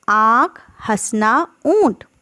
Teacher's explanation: इनके उच्चारण में हमारे मुंह और नाक से ही जो है ध्वनि निकलती है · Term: अनुनासिक स्वर